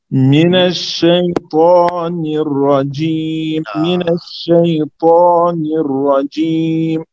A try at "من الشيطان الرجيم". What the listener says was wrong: رجیم، جیم بھی آپ مطلب صحیح نہیں پڑھ رہے. من الشیطان شیطان الرجیم رجیم رجیم.